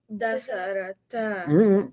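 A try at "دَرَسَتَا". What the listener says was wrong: Keep the letters in order. Darasa.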